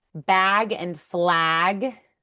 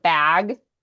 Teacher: Words like bag and flag that have that short A shift towards a long A, like the word vague.